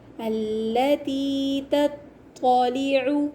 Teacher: التی تطلع، یہاں پر دیکھیے ایک ہے تا اور ایک ہے طا، تو ہمیں اچھی طریقے سے پڑھنا ہے کہ تا اور طا میں فرق ہو، طا کو موٹا پڑھیں گے، تا کو باریک